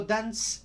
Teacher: Cuando digo Dance no suena la cuerda vocal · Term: sorda